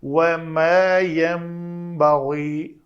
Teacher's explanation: میم کے لیے کیا ہے، دونوں ہونٹ آپس میں جڑ جاتے ہیں، خشک حصہ جڑتا ہے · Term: اقلاب